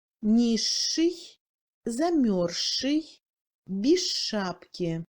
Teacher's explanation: La combinaison des lettres Z et Ch donne un Ch dur long.